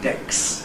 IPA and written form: deks (desk)